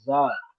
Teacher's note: जबान की नोक को ऊपर नीचे के दांत मिलाकर फिर नीचे के दांतों के ऊपर से लगाएंगे और जबान की नोक जरा सी घिसेगी। उसके अंदर सख्ती होती है।